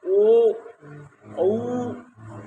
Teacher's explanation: ओ औ कंठ में वाइब्रेशन होता है और ओठ में भी होता है कंपन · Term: कंठ और ओष्ठ